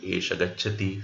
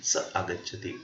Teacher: the visarga of saha and eshaha is dropped, vanishes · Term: visargasya lopah